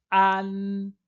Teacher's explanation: para pronunciar AN, lembre-se, o A ele tem que ser aberto, AN, e termina com a língua entre os dentes, ou com a língua atrás dos dentes, AN.